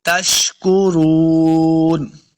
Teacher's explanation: شین پہ سیٹی کی آواز آئے گی